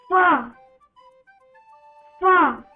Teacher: हमारे ऊपर की ये जो टीथ हैं, ऊपर के टीथ और नीचे का ये हमारा लिप, ऊपर के टीथ और नीचे के लिप एक दूसरे से टच करते हैं